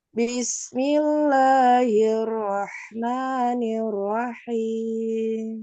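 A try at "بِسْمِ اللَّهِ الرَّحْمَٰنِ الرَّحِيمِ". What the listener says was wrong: Kurang nekan keroknya.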